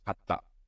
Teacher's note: For example, if you insert a small tsu between ka and ta, the T consonant sound of ta is also pronounced at the end of the first character. The resulting sound becomes hatta. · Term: double consonant sound